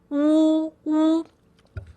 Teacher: when I make the wu sound, my tongue is curled at the back like a ball